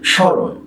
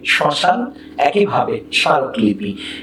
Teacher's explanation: পদের আদ্য ব্যঞ্জন বর্ণে ম ফলা যুক্ত হলে সাধারণত সেই ম ফলার কোনো উচ্চারণ হয় না, কিন্তু সেই ম ফলার জন্য সামনাসিক করতে হয়।